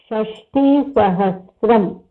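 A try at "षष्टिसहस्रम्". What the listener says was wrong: Sahasram. It is not tram. It is sahasram. Sahasram.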